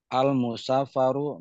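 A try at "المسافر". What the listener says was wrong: musafiru bukan al musafaru. Musafiru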